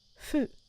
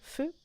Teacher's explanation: That's actually a soft F sound rather than an H on its own.